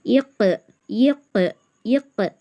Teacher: உருப்பே முஸ்தாலியா plus கல்கலா தடிமனாவும் ஓதணும் கல்கலா செஞ்சும் ஓதணும்